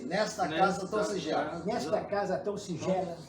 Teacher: Porque a sílaba tônica forte é o gé